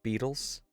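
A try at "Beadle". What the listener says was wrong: Beetle with a D, not beetle.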